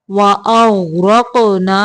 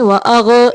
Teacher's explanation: غین کو قلقلہ نہیں کرنا، हरकत नहीं देनी।